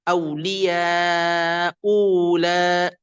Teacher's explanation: Kalau ibdal saniah huruf hamzah kedua diganti jadi huruf mad. Berarti auliya ulik.